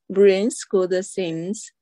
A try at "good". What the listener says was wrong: Okay. Good, not gooda. Good.